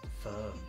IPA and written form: fɜːm (Firm)